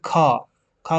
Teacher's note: महाप्राण में आपका जो अधिक वायु निकलती है